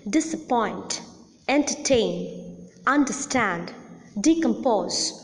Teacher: the last syllable or the third syllable is the most prominent syllable hence the last syllable receives the primary accent but there is another prominent syllable in these words but a